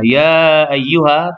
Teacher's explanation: Ha, tapi di situ hukumnya mad jaiz mufasil. Baca panjang 4 atau 5 harakat.